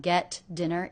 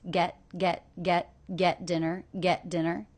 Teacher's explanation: I notice that the T here is a stop T. I don't release it.